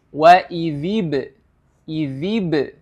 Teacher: Hukum huruf ba dengan harakat sukun ini adalah qalqalah. Huruf ba ketika dia berharakat sukun maka hukumnya adalah qalqalah atau memantul. Jadi cara membacanya wa idzib, idzib.